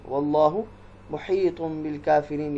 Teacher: تنوین ہے طا کے اوپر اور پھر اس کے بعد با حرف ہے تو یہ اقلاب ہے